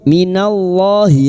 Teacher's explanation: lam jalalah yang didahului fathah dibaca tafkhim